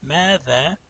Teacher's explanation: these are two syllables that are both long, because the meme has an aleph and the dal has an aleph